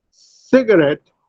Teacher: In cigarette, C has secondary stress and ret has primary stress.